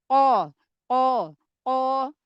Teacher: lemparan suaranya ke atas tapi lebih sedikit ke depan kalau huruf yang punya sifat istilla seperti Huruf qof